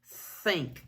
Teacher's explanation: air coming out the mouth vocal cords aren't vibrating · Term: voiceless